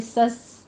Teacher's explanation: سین کے اوپر سیٹی کی آواز لے کر آنی ہے، ہمس ہوگا